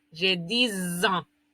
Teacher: Y como vamos a decir años, esta X va a sonar como una S al final.